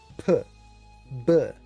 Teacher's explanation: my mouth, I'll exaggerate it here, inflates with air, P, and then the air goes out, and it's a little puff of air. Plosives. So P and B, the mouth has to be closed, but you hear the sound when the mouth opens.